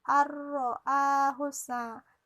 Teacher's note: Dia tidak dengung, hanya di sini dia nun matinya dimasukkan ke huruf ro karena hurufnya ada tasdid. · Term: idgham bila gunnah